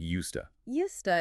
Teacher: When native speakers say the phrase used to, the D sound at the end of used and the T sound at the very beginning of to crash into each other. Because they are formed in the exact same part of the mouth, they blend together completely.